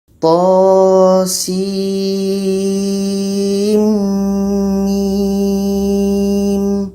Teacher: Ada proses idgham. Jadi di antara sin mim ini di tengah-tengahnya ada dengung. Dengung dua harakat.